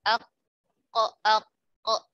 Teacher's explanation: kita rasakan kok kok dia dari pangkal lidah pangkal lidah ako pangkal lidah bertemu dengan langit-langit yang lunak